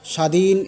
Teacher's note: স্বাধীন এ শব্দে বফলার উচ্চারণ নেই